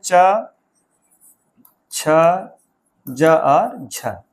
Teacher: ये स्पर्श भी है और संघर्षी। संघर्ष मतलब बड़े संघर्ष के साथ निकलते हैं।